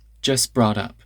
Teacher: The T in just disappears. It doesn't turn into anything. It just goes out of the word entirely.